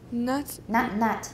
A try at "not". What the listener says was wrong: Okay, so not. So don't say nut.